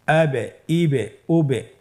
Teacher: আমরা হরফের শেষের দিকে একটা সাউন্ড করছি এটা একটা প্রতিধ্বনী হচ্ছে একটা ডাবল সাউন্ড হচ্ছে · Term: কলকালা